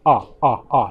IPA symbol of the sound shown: ʌ